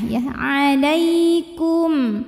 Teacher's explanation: ba selain mim dan ba kebetulan di sini hurufnya adalah Jim maka cara membunyikan mim sukunnya adalah dibaca dengan jelas m-nya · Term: izhar syafawi